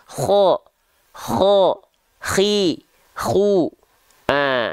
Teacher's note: kalau huruf kho dia mengalir nafas seperti dengkuran. Kho, makanya ada seperti ngorok-ngoroknya, ada seperti dengkuran-dengkurannya.